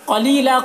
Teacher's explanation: قاف کو پر پڑھیں گے، حروف مستعلیہ میں سے ہے